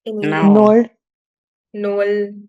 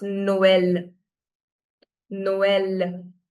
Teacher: So we are giving emphasis to O and E with equal fervor. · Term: trema